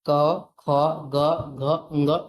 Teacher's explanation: क, ख, ग, घ, ङ ये पांचों वर्ण के उच्चारण स्थान क्या है? कंठ है।